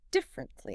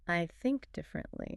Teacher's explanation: It looks like it has 4 syllables. Differently. But in natural spoken English, we usually squeeze it into 3. It sounds more like differently.